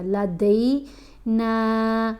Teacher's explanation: پھر دال کے اوپر زبر ہے، ساتھ یا ساکن ہے، حرف لین ہے، دئی آواز بنے گا. لدئی نا، نون کو 3 الف جتنا لمبا پڑھنا ہے